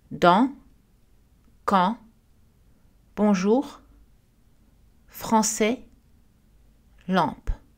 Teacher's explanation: nous avons une voyelle nasale parce que les N ou M sont suivis d'une consonne